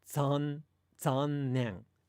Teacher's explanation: At the beginning of a Japanese word, if a Japanese word begins with Z and there's no preceding sound, you actually say it kind of like the Z in pizza